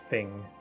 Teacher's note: like with an F instead of the TH, which I think is just like a dialect difference